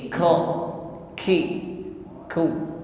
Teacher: jahr ya toh inhibasu Jar nafasi berarti mengucapkan O ini tidak disertai dengan nafas atau udara yang terlepas